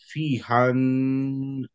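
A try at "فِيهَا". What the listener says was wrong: ফি হান বললা ফি হান কেন হবে? ফি হা।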